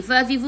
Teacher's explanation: gigi atas menyentuh perut bibir bawah